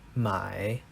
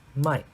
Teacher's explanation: when this character has the third tone then it is my to buy and when it has the fourth tone then it is might to sell